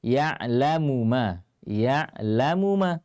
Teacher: tidak dibaca dengan meleburkan Meme yang pertama ke dalam yang kedua